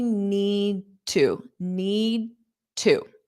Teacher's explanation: So your mouth is in that D position and then you open it up for the T, but don't pronounce it.